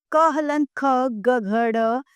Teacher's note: क हलंत ख ग घ ड कंठ्य व्यंजन है। वास्तव में ये व्यंजन कंठ से थोड़ा ऊपर कोमल तालु से बोले जाते हैं। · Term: कंठ व्यंजन